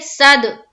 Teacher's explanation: दाल में कलकला होगा क्योंकि दाल के ऊपर जज्म है और दाल हरूफ कलकला में से है